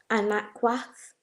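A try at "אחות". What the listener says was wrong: Okay, so anakwath would be a different, I don't know if that's a different word, but there's no na. There's no na in the word sister. It'd be aquath. So to say sister, it would be aquath, right? So you have ak, which means brother, and basically the feminine of that is aquath. So the wath at the end of ak means sister.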